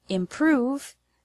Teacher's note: the word improve has the stress on the second syllable prove